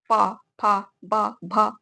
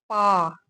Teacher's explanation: हमारे दोनों ओठ एक दूसरे की समीप आते हैं और स्पर्श करते हुए निकलते हैं। जैसे आप उच्चारण कीजिए प आपके दोनों होठ एक दूसरे के समीप आ रहे हैं और एक दूसरे से स्पर्श कर रहे हैं। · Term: ओष्ठ